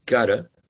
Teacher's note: In the case of got to, right? Gotta, there is an elision of the first t